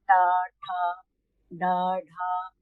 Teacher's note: टवर्ग जो होता है, जी मूर्धा से उसका उच्चारण होता है